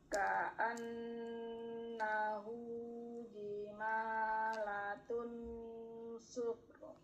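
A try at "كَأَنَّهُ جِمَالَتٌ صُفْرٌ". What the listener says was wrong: Ujung lidahnya tidak menyentuh ke gusi, ke langit-langit. Tun itu kan tan, tun, tin itu kan nyentuh ya. Tun, kalau tun nempel, ini jangan ditentukan, jangan ditempelkan ujung lidahnya, agak dijauhkan, diturunkan lagi.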